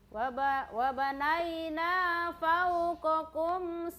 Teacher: Jadi tahan dulu suara, kemudian dilepas dengan kolkola. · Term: sifat huruf syiddah